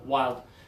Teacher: Some native speakers, some Americans, can say this as 1 syllable